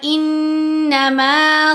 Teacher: یہاں نون کے اوپر تشدید ہے، پھر غنہ ہوگا